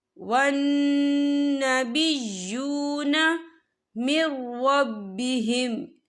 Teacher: یہ دیکھیں ون، یہاں نون مشدد ہے تو یہاں پر غنہ ہوگا